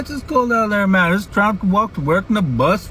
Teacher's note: super slow and easy almost like a valley accent with an upswing at the end · it's called a contour pitch accent it's got that singing quality